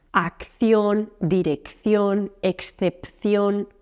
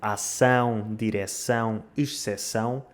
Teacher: muitas destas palavras, como ação, direção, exceção, em espanhol conservam duas consoantes que em português se perderam.